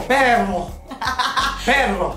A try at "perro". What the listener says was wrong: Don't do with the throat. No French here.